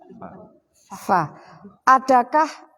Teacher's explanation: ujung gigi atas dengan perut bibir dalam bagian bawah